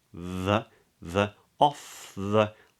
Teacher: Off, not off, not or, but o. Off the, voiced TH, tongue either between the teeth or behind the back of the top teeth